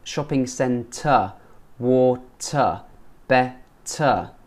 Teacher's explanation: We don't pronounce the R's at the end of the word.